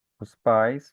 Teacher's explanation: Vai ser um monossílabo, uma sílaba só. Então o A vai se juntar com o I e vai formar um ditongo